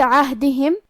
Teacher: کلمت عہدہم، حرف العین کو ہم حلق کے درمیان والے حصے سے ادا کریں گے. پھر یہاں ہا ساکن ہے تو ہمیں ہا کو ظاہر کرنا ہے